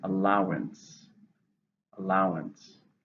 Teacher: It's a noun. How many syllables? 3, stresses on the second.